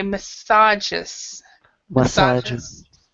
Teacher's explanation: we stress it in a second syllable